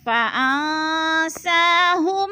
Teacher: نون ساکن کے بعد سین حروف اقفا میں سے آگے ہے تو ادھر اقفا ہو رہا ہے، یعنی غنہ ناک میں آواز کو چھپا کر پڑھیں گے